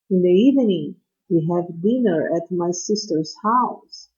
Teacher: evening, dinner, sister's house are the most important words in this sentence, and they are the stressed words